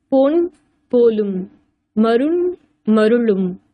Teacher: மாத்திரை அளவில் குறையாது ஒலிக்கிறது நகர நகர மெய்களின் முன்னும் வகரத்தின் பின்னும் வரும்போது ம் தனக்குரிய அரை மாத்திரை அளவில் இருந்து கால் மாத்திரையாக குறைந்து ஒலிக்கும் இவ்வாறு குறைந்து ஒலிப்பது மகரக் குறுக்கம் எனப்படும் சான்று பொன் போலும் மருண் மருளும்